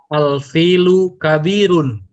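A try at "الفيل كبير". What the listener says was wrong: Al-filu kabirun, mumtaz. Sahih.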